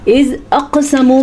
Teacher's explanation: از اقسمو میں قاف کے اوپر ساکن کی وجہ سے یہاں پہ قلقلہ ہوگا